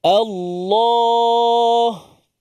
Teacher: Lafaz Allah. Tebal lah sebelum dia baris atas. Tebal. Lam tu tebal. Kerana sebelum dia berbaris atas.